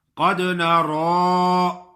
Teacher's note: را پہ کھڑی زبر ہے اور را کو موٹا بھی پڑھیں گے۔ کچھ لوگ ایسا پڑھتے ہیں قد نارا پڑھتے ہیں، نارا، نون پہ بھی کھڑی زبر پڑھتے ہیں، لیکن نون پہ کھڑی زبر نہیں ہے، نارا نہیں پڑھنا، نارا غلط کا لفظ ہے۔